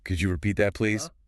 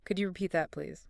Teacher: Focus on your voice going up at the end. A rising intonation makes it polite.